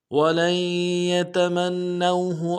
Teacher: ولن میں لام کو آگے یا کے ساتھ ملانا ہے، نون نہیں پڑھیں گے، یا کے اوپر تشدید زور دیں گے۔ · یتمنوہ میں میم کو نون کے ساتھ ملائیں گے، نون کے اوپر تشدید زور دیں گے